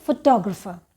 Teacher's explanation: and the stress is on the second syllable, t. तो उसको हम लोग बोलते हैं फोटोग्राफर.